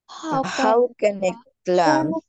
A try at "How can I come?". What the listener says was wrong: Climb না, come, এখানে এলটা হচ্ছে সাইলেন্ট থাকবে। How can I come?